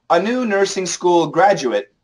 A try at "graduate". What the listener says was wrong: A new nursing school graduate. Graduate. Graduate.